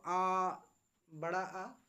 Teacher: इसके उच्चारण मुख सबसे अधिक खुलता है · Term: विवृत स्वर